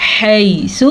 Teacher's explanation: حَيْثُ حا کے تلفظ کا دھیان رکھنا ہے. یہ یالین ہے اس کو لمبا نہیں کرنا. سا کے پر پیش ہے تو حَيْثُ اس سے زیادہ لمبا نہیں کرنا.